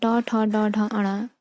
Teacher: ट, ठ, ड, ढ, अण, ये मूर्धा से उत्पन्न होने वाली ध्वनियां हैं